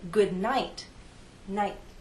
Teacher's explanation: The tip of my tongue touches that hard bump. There is a release of air, but the puff is very weak. And that's the difference between a T at the beginning of a word and the T at the end of a word.